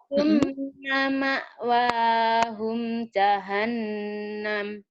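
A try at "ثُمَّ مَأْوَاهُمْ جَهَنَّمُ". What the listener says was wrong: Sekali lagi, mimnya diterangin.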